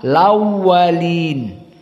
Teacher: maka di sini Hamzah dihilangkan fathahnya dipindahkan ke Yang sebelumnya Yang sukun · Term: naql